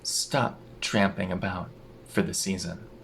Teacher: Now the T in about turns into a glottal stop.